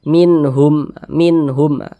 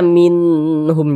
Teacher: Ha ini termasuk huruf izhar halqi maka ini hukumnya izhar halq nun sukun berjumpa dengan huruf ha dibaca jelas tak berdengung pendek saja minhum minhum jangan dibaca Min um jangan dipanjangkan seperti itu jangan